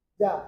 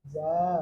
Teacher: kalau ada huruf berharokat fathah a ketemu dengan alif, maka harus dibaca panjang a. Misalnya jim fathah, cara bacanya jim fathah a.